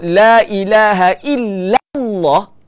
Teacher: Okey, sekarang ni bila duduk dalam lafaz jalalah tu kalimah Allah, kena baca dengan tebal untuk membesarkan kalimah Allah tu. Nak menta'zimkan kalimah Allah tu, nak membesarkan, mengagungkan kalimah Allah tu, lam tu kena baca dengan tebal. Sifat tebal ni dipanggil taghliz.